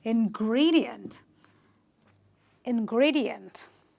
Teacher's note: You will stress on the syllable before the IENT, and you will say ingredient